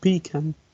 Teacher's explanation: New Yorkers may stress the first syllable, whereas other dialects may stress the second.